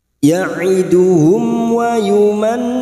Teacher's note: Ada mim sukun bertemu wawu, namanya bacaan idhar syafawi. Idhar syafawi yaitu terang di bibir, dibaca jelas, tanpa mendengung.